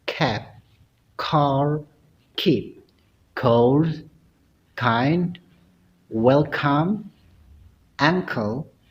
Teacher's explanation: meskipun ada di tengah huruf K, tetap diplosifkan atau diletupkan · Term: bunyi plosive K